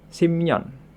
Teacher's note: Di sini biep bertemu dengan nian sehingga biepnya berubah menjadi M sehingga dibaca simnyeon. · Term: nasalisasi